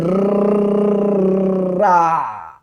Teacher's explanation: र को बोलो तो जबान ऐसे वाइब्रेट करती है। रा ये जो र है हल्का सा जबान का वाइब्रेशन यही है प्रकंपन। · यही है प्रकंपन। तो इसको बोलने में जबान कांपती है। र ऐसे आता है और इसको बोलने में हवा ऐसे लुढ़कती है।